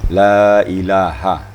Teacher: huruf H-nya. La ilaha, H-nya itu. Jangan sampai ditashilkan, kurang jelas gitu ya.